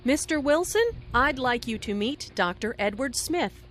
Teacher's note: Notice the rising intonation on Mr. Wilson, which is used to address someone. Listen for the D in I'd like.